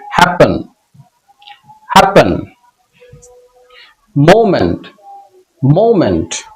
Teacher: ই এর উচ্চারণ হতে পারে অ্যা এর মতো। এই সাউন্ডটাকে সোয়া সাউন্ড বলা হয়।